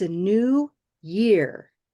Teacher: when it's just a description of the year it's a new year year is the stress that's normal